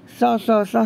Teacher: खर प्रत्याहार के अंतर्गत जब आएगा तो विवार, श्वास और अघोष के साथ साथ यह महाप्राण है।